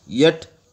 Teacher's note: the front of the tongue may be raised towards the hard palate